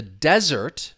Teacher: the noun stress is on the first syllable